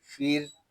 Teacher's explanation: یہاں را کو ہم سکون کے ساتھ ادا کریں گے، را کو ہم باریک بھی پڑھیں گے کیونکہ را ساکن سے پہلے حرف کے نیچے زیر آ رہا ہے۔